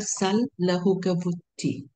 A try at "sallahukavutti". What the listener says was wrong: Better. Getting better.